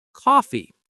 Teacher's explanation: It's coffee, not coffee. The stress is on the first syllable and that first syllable sounds like cough. Coffee. Try it.